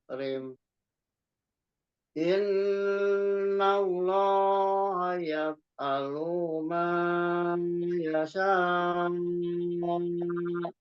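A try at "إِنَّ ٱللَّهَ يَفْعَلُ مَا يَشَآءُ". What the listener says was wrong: Alu, lu-nya itu enggak di ayun.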